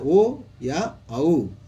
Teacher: ओ या औ, और दोनों ही कंठ और होष्ठ से बोले जाते हैं। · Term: कंठोष्ठम